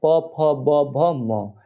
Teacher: प वर्ग जो पूरा होगा उसका जो उच्चार स्थान होगा ओष होगा